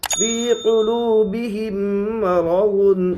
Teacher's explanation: یا ساکن سے پہلے زیر ہے اس لیے یا مدہ ہوگی، یا مدہ کو ایک الف کے برابر کھینچ کر پڑھے